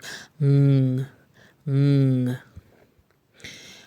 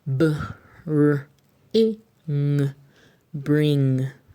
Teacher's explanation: we start to cut out the heavy G sound at the end so that we're left with ng